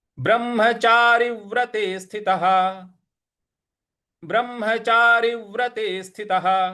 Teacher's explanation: यहां र के आगे थोड़ा सा हमें बल लगाना है।